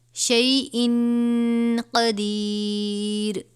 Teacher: اِنَّ اللَّهَ، نون مشدد غنہ کریں گے، اِنَّ اللَّهَ عَلَى كُلِّ شَيْءٍ قَدِيرٌ. یہاں پہ تنوین کے بعد حرف اخفا میں سے قاف ہے، غنہ کریں گے